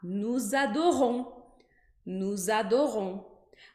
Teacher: eu tenho no e o adorou no a dor um mas quando eu coloco essas duas palavras juntas vai aparecer um som de z